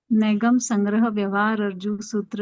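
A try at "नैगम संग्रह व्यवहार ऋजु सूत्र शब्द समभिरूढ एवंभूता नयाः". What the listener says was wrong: नहीं, रिजु नहीं बोलना है, व्यवहार जू है।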